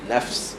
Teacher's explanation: habiskan angin pada Fa dulu sebelum masuk pada Sin